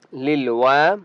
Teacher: वाव को एक अलिफ की मिक़दार खींच कर पढ़ेंगे। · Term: अलिफ मद्दा